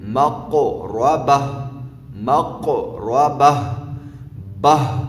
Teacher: وقف کی صورت میں مقو ربہ، مقو ربہ، بہ، یہ بہ گول تا جو ہے وہ ہا میں تبدیل ہو گئی اور ساکن بھی ہو گئی